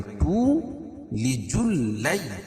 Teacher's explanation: یا ساکن سے پہلے زبر ہے تو یائلین ہوگا، اس کو نرم آواز کے ساتھ جلدی ادا کریں گے۔